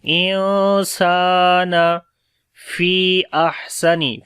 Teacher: انسان نون ساکن کے بعد سین آ گیا تو یہاں پر اخفا کریں گے ، لائٹ والا اخفا ہوگا، سین کو لمبا کریں گے، الف · اور ہا کے اندر صفت ہمس آ جائے گی، سانس جاری ہوگا